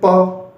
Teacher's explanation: प यानी आप बोलोगे तो आपके जो होठ है वो चिपकेंगे। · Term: ओष्ठ्य ध्वनि